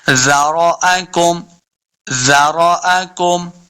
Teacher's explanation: هو الذی ذرأکم، زارو، دیکھیں زال کو بالکل نرمی کے ساتھ پڑھنا ہے، سختی کریں گے تو یہ زا بن جائے گا، زا نہیں بلکہ زال ہے، تو زال کو ہم نے نرمی کے ساتھ پڑھنا ہے۔ زارو، را کو بھی پر پڑھنا ہے، حمزہ کو لمبا نہیں کریں گے۔ ذرأکم ذرأکم، کاف پہ غنہ بھی نہیں کرنا، بغیر غنہ کے پڑھیں گے۔